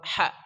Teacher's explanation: Ha itu dari tengah kerongkongan kita.